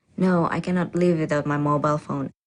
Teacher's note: the answer is definite and this certainty is expressed with a flat or level tone